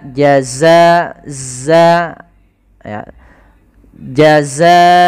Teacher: sifatnya adalah sifat rikhwah yaitu mengalirnya suara